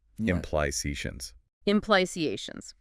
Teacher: The main stress is on the third syllable.